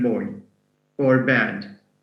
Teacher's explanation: voiced bilabial stop applies only to one consonant sound, which is B as in boy or bad